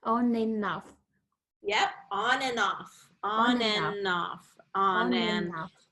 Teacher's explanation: we don't release the D sound